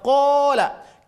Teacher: ketika kita membaca qo maka dia dibaca panjang dan panjangnya suara itu terasa sekali keluar dari rongga tenggorokan dan rongga mulut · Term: huruf mad thobii